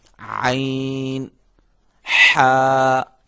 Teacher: عین یہ بھی حلق سے ادا ہوگا, حلق کے درمیانی حصے سے